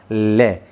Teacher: जीभ का जो अग्रभाग है वो हमारे मुख के मध्य में आ जाता है। इसी कारण वायु दोनों किनारों से छूती हुई बाहर निकलती है लय, इसलिए इसी कारण इसे पार्श्विक व्यंजन भी कहा जाता है।